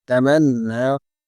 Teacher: নুন খাড়া জবর না, হ্যাঁ? এক আলিফ টান হবে।